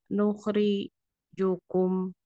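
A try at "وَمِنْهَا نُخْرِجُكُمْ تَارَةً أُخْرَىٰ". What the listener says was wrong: Nah, nuhnya yang tadi. Nukhrijukum. Ah, ri-nya kepanjangan. Masih kepanjangan Bu. Nukhriju. Nukhriju.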